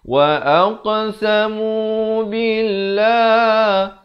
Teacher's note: Qaf bila saya berikan pantulan mulut saya bulat. Saya tak pepeskan jadi tak betul. · Lafz jalalah dibaca nipis 2 harakat.